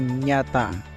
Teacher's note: dihasilkan tengah lidah dan langit-langit keras